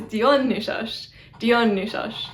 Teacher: I use a retracted S. It's like a sh sound instead of a s sound. People argue as to which S was used in ancient Greece, since modern Greek uses the retracted S, which is the sh one.